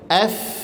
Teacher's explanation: Ujung gigi seri atas ditempelkan ke bibir bahagian bawah. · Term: huruf fa